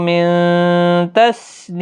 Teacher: نون ساکن کے بعد تائن اخفاء حقیقی ہوگا